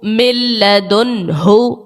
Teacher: اور اس کے بعد دیکھیں تو نون ساکن ہے اور نون ساکن کے بعد جو ہے وہ ہا ہے اور ہا حرف حلقی کا ہے، تو یہاں پر اظہار کا قاعدہ بھی لگ گیا ہے اور غنہ یہاں نہیں کیا · نون ساکن کے بعد لام حرف ارملون کا ہے، ادغام کا قاعدہ لگایا اور لام میں غنہ نہیں کرتے